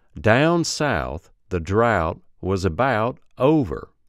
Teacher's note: And the diphthong ow becomes ow, so it becomes a triphthong almost.